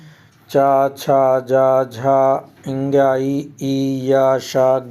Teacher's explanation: च छ ज झ इंग ई इ य श ज्ञ ये तालव्य ध्वनि के अंतर्गत बोले जाते हैं